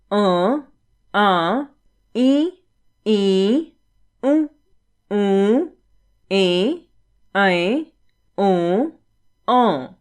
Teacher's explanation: जब स्वरों का उच्चारण मुख व नाक दोनों से होता है तब उन्हें अनुनासिक स्वर कहते हैं